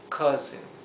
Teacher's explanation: acá este sonido de la o y la u sería algo entre medio de una a y una o